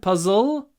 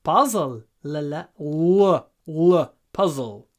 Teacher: make sure you get the dark l in your throat not puzzle puzzle of the the tip of the tongue goes